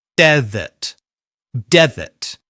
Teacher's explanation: We stress the first syllable and then use the weak uh vowel sound, the schwa, in the second syllable